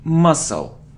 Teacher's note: We don't pronounce c, muscle.